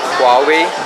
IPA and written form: ˈhwɑːˌweɪ (Huawei)